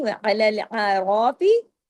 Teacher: عین کو عین کی طرح عین کی آواز آنی چاہیے، الف کی نہیں · را کو ہیوی کیجئے زبر کی وجہ سے، رجال ادغام ہو رہا ہے، یا جو ہے تشدید کے ساتھ ہے۔